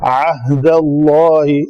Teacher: عین کا مخرج کیا ہے؟ وسط حلق